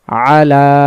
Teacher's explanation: তারপরে আইন জবর আ, লাম খারা জবর লা, 1 আলিফ। তাহলে আ তাড়াতাড়ি, লা 1 আলিফ টানবো, আলা। ইয়াতে এখানে কিছু নেই, এটা এভাবেই থাকবে, উচ্চারণ হবে আলা।